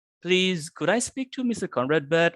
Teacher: because this is the yes and no question. So you might want to raise your tone.